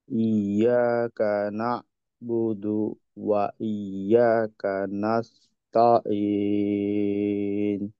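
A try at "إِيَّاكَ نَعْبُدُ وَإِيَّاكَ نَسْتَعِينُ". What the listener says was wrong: একটা হলো না বুদু, আইনে তো আমরা জানি যে তাওয়াসুদ সিফত। তো এর আওয়াজটা জজম তাজিদ যুক্ত অবস্থাতে আওয়াজটা বন্ধ হবে না, আওয়াজটাকে চালু রাখতে হবে। যেমন না, না বুদু, না বুদু, এখানে আইন এবং দালের আওয়াজ, এই বায়ের আওয়াজ, না এবং বু, না বু, এই দুইটা আওয়াজ হলো যুক্ত। এইটা দুইটার মাঝে আহ, এমন সময় থাকবে না যেটা কিনা আওয়াজ অফ ছিল, এমনটা হবে না। তো যুক্ত রাখা, না বুদু, এরকম।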